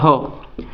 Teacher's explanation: फेफड़ों से हवा बाहर निकलेगी मुंह के जरिए से, तो इसको बोलेंगे महाप्राण। ह बोलते ना उस तरीके से, तो इसको ह को महाप्राण बोलते हैं।